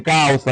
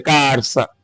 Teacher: Mais tarde pode surgir o rotacismo. Troca do L pelo R.